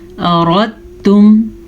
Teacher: را کو پر پڑھیں گے، را پہ زبر ہے اس لیے